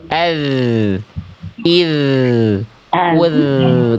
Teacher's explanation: Ujung lidah menyentuh ke ujung gigi atas.